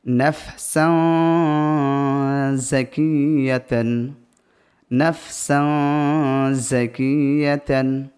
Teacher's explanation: এই তানবিনের আওয়াজকে নাকে তুলে এক আলিফ পরিমাণ গুণনা করে পড়তে হবে, কারণ তানবিনের পরে জা অক্ষরটি চলে এসেছে ইকফার অক্ষর।